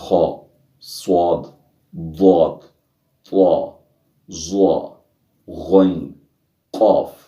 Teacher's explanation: इन 29 हरूफ में 7 हरूफ ऐसे हैं जो हर हालत में पुर यानी मोटे पढ़े जाते हैं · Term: हरूफ मुस्तालिया